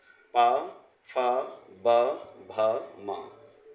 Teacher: ये व्यंजन एक तरह से हमारे औष्ठ वर्ण हैं। बिना ओंठ की सहायता से इनको हम नहीं बोल सकते। ये ओंठ को स्पर्श करती है हमारी जीभ।